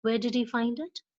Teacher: the intonation, that is voice, is falling to the lower pitch at the end